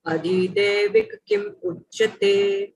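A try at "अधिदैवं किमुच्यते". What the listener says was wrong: Daivam. Daivam. It's not Devam. Daivam. Kimuchate. Don't read English. Don't read English at all. Don't look at that English. At least read that Balaram, Devanagari font. Kimuchate. Prabhupada did not break there.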